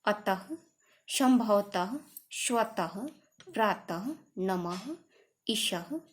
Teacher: विसर्ग जो है इसका उच्चारण ह की तरह होता है